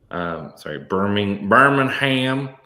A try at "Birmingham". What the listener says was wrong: Yeah, there's no G. Do not pronounce the G. Silent.